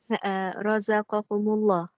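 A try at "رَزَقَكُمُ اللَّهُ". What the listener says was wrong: Yeah, razaqakumullah. You didn't pronounce this, did you? Right? You just merged it together. Mullah. But if let's say I for whatever reason I had to stop razaqakum. Yeah, I said razaqakum, and I stopped there and I want to start on the word Allah.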